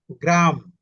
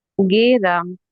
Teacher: উচ্চারণ করতে গিয়ে মধ্যে স্বরের একটা আগমন ঘটছে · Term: মধ্য স্বরাগম